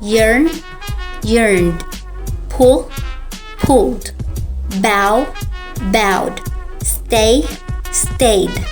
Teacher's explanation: If the base or the root verb ends in voiced sound, which means your vocal cords vibrate, the sound of D blends in when ed is placed. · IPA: /d/